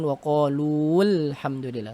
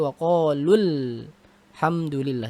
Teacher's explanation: maka cara bacanya adalah yang pertama dibaca tidak panjang ketika washol maksudnya apa huruf yang ini tidak dibaca panjang lagi ya Karena